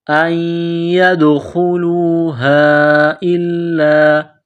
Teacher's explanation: دال پر قلقلہ کریں گے